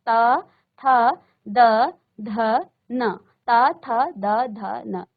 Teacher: तो देखिए, जब आपने त वर्ग का उच्चारण किया तो आपकी जीभ कहाँ पर स्पर्श कर रही है? जब आप त वर्ग का उच्चारण करते हो तो आपकी जीभ आपके दांतों को स्पर्श करती है। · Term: दंत्य